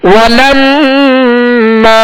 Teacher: میم مشدد میں غنہ کریں گے اور میم کے آگے الف مدہ ہے, الف سے پہلے زبر ہے لہذا الف کو ایک الف کی مقدار میں کھینچنا ہے.